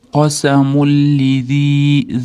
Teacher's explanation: Endi mim ustida tanvin kelyapti. Lam bilan yo'liqqanligi uchun g'unnasiz idg'om kelyapti. Tashdidli qilib o'qib o'tib ketamiz. Xolos, g'unna ushalmaydi, g'unnasiz kelganligi uchun.